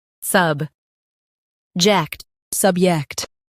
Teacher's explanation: Stress sub and keep ject light.